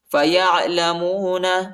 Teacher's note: عین کو وسط حلق میں پڑھنا ہے، یعنی گلے کی درمیانی حصہ میں پڑھنا ہے